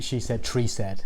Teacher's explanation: when those Irish people pronounce TH words such as tree, which is in my title, we have a hard TH sound